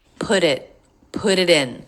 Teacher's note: we have linking ending consonant to beginning vowel two in a row here that make flap T's